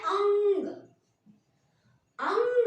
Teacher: जब हम अनुस्वार का प्रयोग कर रहे हैं तो जीभ जो है पीछे से ऊपर उठती है और पूरी वायु जो है वो नाक से बाहर आती है ठीक है मुह की वायु बंद कर देती है जीव और